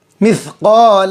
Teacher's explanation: हलक की तरफ थोड़ा सा झुककर बड़ा काफ निकालेंगे